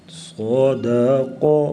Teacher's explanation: قاف کو پر پڑھیں گے، موٹا کریں گے اور قلقلہ بھی کریں گے